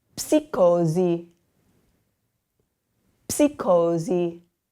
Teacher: we have the PS, which you're going to pronounce the P